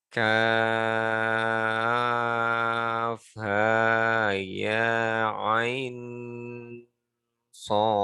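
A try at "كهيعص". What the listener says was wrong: Panjangkan dulu matnya. Panjang dulu, panjang. Baru masuk ikhfa nanti. Panjang ain ketemu ya. Jadi panjangkan dulu, di sini ada kan cara bacanya. Ain ketemu ya, ada bendera. Ingat, kenapa tebal? Karena shotnya tebal. Ikhfa-nya tebal karena huruf shot tebal. Panjang dulu.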